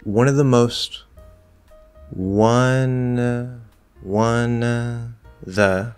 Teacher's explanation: So we can drop the V and of.